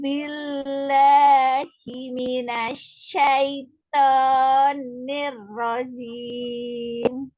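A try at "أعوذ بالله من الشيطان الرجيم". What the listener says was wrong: Itu baca auzu. A-nya benar. Tapi au-nya yang salah. Au-nya itu ain, nggak boleh uzu. Nah, itu berarti hamzah Au. A-nya benerin lagi. A. A'udzu billah.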